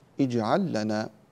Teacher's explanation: كذلك قبلها في اجعل لنا، اللام مع اللام تدغم، اجعل هذا فعل أمر، فعل أمر مبني على السكون، فإذا كان مبنيا على السكون وجاء بعده لام مثلها، جاءت كذلك لام مثل اللام الأولى، فإننا ندغم هذا إدغاما متماثلين، فنقول هذا إدغام متماثلان، اجعل لنا.